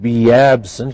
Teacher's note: hear the y in there